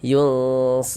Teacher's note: Di bagian yunnya itu kita tahan sejenak suaranya. Ah, kita panjangkan sepanjang dua harakat. Kita dengungkan.